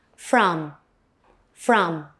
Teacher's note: Notice the schwa a sound in from.